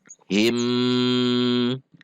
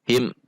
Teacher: Mim sukun di depannya bukan mim dan bukan ba, maka mim sukun dibaca izhar syafawi, tidak dipanjangkan. Him, tidak juga dihentak.